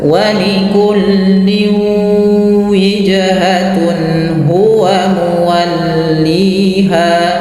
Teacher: langsung ke waw dan masukkan ke rongga hidung kita